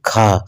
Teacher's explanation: महाप्राण में ह जैसी ध्वनि सुनाई देती है।